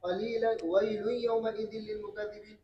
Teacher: نون ساکنہ تنوین کے بعد واو اور یا آنے کی صورت میں خلف ادغام تام کرتے ہیں، غنہ نہیں کرتے.